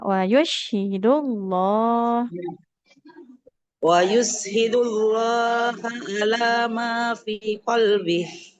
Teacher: Lafaz Allahnya lamnya tebal karena huruf sebelumnya